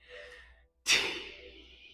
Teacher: remember to have that bit of air between your unvoiced consonant T T and your vowel, your voiced sound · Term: aspirated